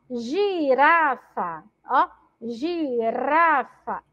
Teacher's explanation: Olha o som da letra R, como tá aí bem vibrante.